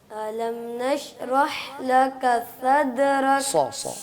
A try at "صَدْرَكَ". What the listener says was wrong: صاد کو موٹا کیجیے اور را بھی موٹا ہے. صادرک.